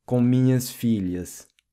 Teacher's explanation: The LH sound in Portuguese is pronounced lha, like in the word million.